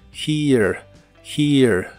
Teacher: la H suena como una J suave